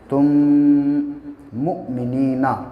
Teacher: یہاں پہ تا ہے اور اس کے بعد تشدید ہے تو یہاں پہ اس تا کو اس میم سے ملائیں گے